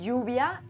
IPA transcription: 'ʝu.β̞ja